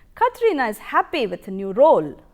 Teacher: We have three focus or content words, that is Katrina, happy, and role. These are emphasized.